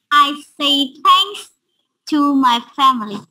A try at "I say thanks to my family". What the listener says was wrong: Yes, good.